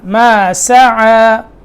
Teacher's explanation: سین باریک کرنا, ما سعى, صا نہیں پڑھنا